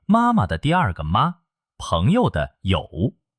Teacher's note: 它没有自己的声调，读得又轻又短。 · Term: 轻声